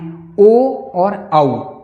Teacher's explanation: ओ और औ का उच्चारण स्थान कंठ और ओष्ठ है।